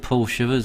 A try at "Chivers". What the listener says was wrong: Chivers, not shivers. Chivers. Chivers. Not chivers, not shivers. Chivers.